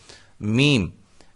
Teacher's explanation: میم دونوں ہونٹوں کی خشکی والے حصے سے. ٹھیک ہے. دونوں ہونٹوں کے جو خشکی والے بیرونی حصے ہیں ان سے جب یہ وہ جب ملتے ہیں آپس میں تو میم ادا ہوتا ہے.